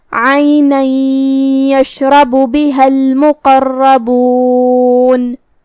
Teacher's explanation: آخر میں ہم نون پہ رکیں گے تو اس پہ جزم سے رکیں گے تو ہمیں نون کو ظاہر کرنا ہے